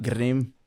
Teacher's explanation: you're implementing that R, that very specific tapped R.